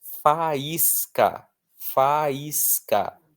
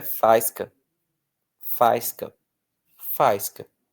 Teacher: O I está sozinho na sílaba, seguido de S, que é a mesma coisa que nada, e ele é a parte mais forte da palavra.